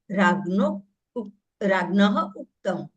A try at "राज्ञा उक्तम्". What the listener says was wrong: राज्ञः ने राज्ञा उक्तम अ और उ आ और उ दोनों मिलकर ओ हुआ है।